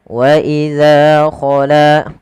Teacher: Panjangkan huruf za dan la kedua-duanya sama karena ia mad thobi'i. Kemudian ba'duhum d tebalikkan huruf donnya dan kita bedakan antara hiya dengan huruf dal.